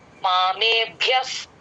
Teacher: ప ముందు ఎప్పుడు విసర్గ వచ్చిన ఎఫ్ సౌండ్ లాగా చెప్తాం.